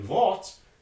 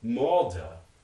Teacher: sometimes the morpheme final stops are voiceless as in volts and sometimes they're voiced as in malta